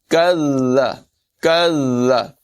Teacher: كَذَّبَ الَّذِينَ، کاف کو ذال سے ملانا ہے، اور یاد رکھیں کہ جو مشدد حرف ہوتا ہے اسے ذرا رک کر ادا کرتے ہیں۔ کذ کذ، اور ذال میں سیٹی کی آواز پیدا نہیں ہونے دیں گے